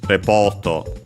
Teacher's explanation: accented on the P in Japanese uh because uh the accent doesn't shift there for these uh English words